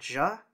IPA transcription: ʒ